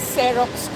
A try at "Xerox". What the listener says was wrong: Not Xerox. It's Xerox. No, it's Xerox. Pronounced with a Z, not an S. It's with a Z, not an S. Xerox. X sounds like a Z. Like xylophone. Xylophone.